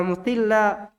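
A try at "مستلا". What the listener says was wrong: tak yang ditasdid, lanya tidak. Lanya tidak tasdid. Mustila.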